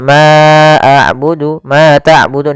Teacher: Untuk panjang yang kita panjangkan sepanjang dua harakat. Kemudian ma ta'budun berlafal dun. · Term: mad thay'i